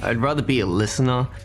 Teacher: Aussies tend to use an upward intonation at the end of their phrases.